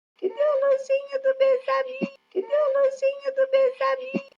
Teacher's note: a plateau intonation that begins with a rise that stays very high, around 600 Hz. This question is almost sing-songy.